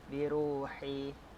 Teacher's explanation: ru juga adalah mad asli sepanjang 2 harakat.